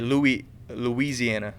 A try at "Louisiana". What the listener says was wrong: Louisiana. You gotta emphasize the oui.